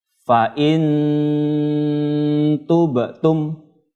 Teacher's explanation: Menyamarkan bunyi nun sukun ketika bertemu dengan huruf ikhfa hakiki ya. Jadi membacanya fa in mendengung ya atau sengau. Berapa harokat? 2 harokat atau 2 ketukan.